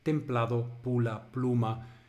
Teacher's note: en que bilabial y líquida continuamente se compone y funden